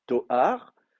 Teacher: Donc vous avez Toaro ou Tooro, mais en tout cas le Aleph se maintient comme consonne. Toar, le Aleph se maintient comme consonne, il n'est pas devenu quiescent